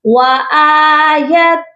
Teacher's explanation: یہاں پر وَآیَةٌ تنوین کی آواز نہیں آئے گی، بلکہ یہ پڑھا جائے گا وَآیَةٌ، تا کو ہم ڈائریکٹ لام کے ساتھ ملائیں گے اور سختی سے ملائیں گے، بغیر غنے کے ملائیں گے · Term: ادغام